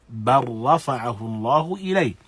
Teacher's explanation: lam as-sakina meeting ra is a form of idgham that is wajib, that is idgham al-mutaqaribain.